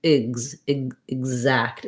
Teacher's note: Then when we look at something like exact, it has the stress on the zact syllable, which means this letter E is no longer going to say that red tent vowel. Instead, it's going to be a short reduced I sound, a reduced vowel instead of a clear vowel. And then the voice for the letter X is on this time.